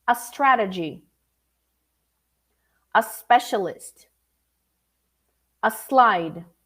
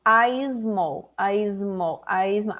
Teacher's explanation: There is no vibration coming. There is no is, only s, like a snake.